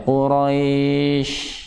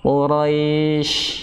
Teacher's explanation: Jadi sifat tafasi bukan sifat shafir. Karena sifat shafir yang dimiliki adalah huruf sin.